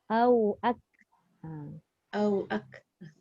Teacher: Kaf kita tahu hams dia huruf hamas tapi suara tak keluar tahu angin dia. Jadi kalau kita baca ak salah.